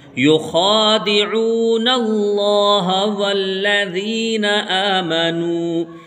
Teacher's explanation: यहाँ पर लफ्ज़ अल्लाह आया है, जब भी लफ्ज़ अल्लाह आएगा उसको हम पुर करके पढ़ेंगे, यानी मोटी आवाज़ में पढ़ेंगे